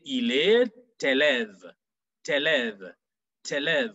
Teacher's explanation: Why? Because you'll be joining the T with the E at the beginning of élève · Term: liaison